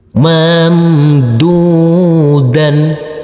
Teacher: Huruf mim sukun cara bacanya sama dengan huruf m. Huruf dal yang berdhammah u ini bertemu dengan huruf wau sukun, kita baca panjang dengan panjang dua harakat. Huruf dal yang berfathah tanwin, kita kasih akhiran huruf n.